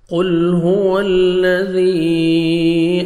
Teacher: لام کو آپ نے ہلانا نہیں ہے، قاف کو موٹا کر کے پڑھنا ہے